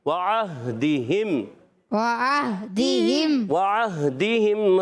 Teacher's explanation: عین ادا ہوتا ہے حلق کے درمیان والے حصے سے، ہا ادا ہوتا ہے حلق کے نیچے والے حصے سے